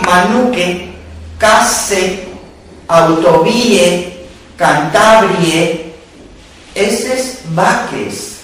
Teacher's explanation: la átona final en e, detrás de sílaba tónica, aunque esto solo se da en valles de Besaya y Miera